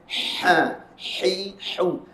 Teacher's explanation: berat sini Sebab Dia duduk di belah bawah pangkal khalquum sedangkan huruf ha yang atas ni berada di Tengah halum dekat dengan rongga mulut yang luas dia bunyi ringan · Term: ha nipis